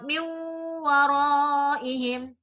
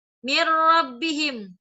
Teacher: Beda dengan min waraihim, dengung. Mir rabbihim, tidak dengung gitu.